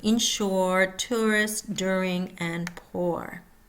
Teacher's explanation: Similar but different than the backward C and the colon in Canadian pronunciation. Mouth starts almost closed with lips rounded and moves into open, relaxed mouth